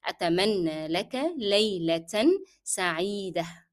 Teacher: So laylatan sa'ida with the marks, then the noun and the adjective will be carrying tanween with fatha. However, with layla, we will pronounce the tanween laylatan, but when we come to sa'ida, we will drop the sound of tanween. It will be there, it will be written, the tanween will be written, but will be dropped in pronunciation as we are stopping here.